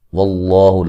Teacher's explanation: لفظ اللہ کو موٹا ادا کریں گے، اس سے پہلے زبر ہے